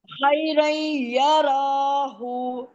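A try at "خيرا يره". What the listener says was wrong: کو کیوں کھینچ رہی ہیں؟ یا راہو، ہو کو کھینچنا ہے.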